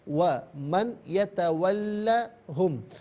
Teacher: نون ساکن کو یا کے ساتھ ملائیں گے اور یا کی آواز کو غنّے کے ساتھ ادا کیا جائے گا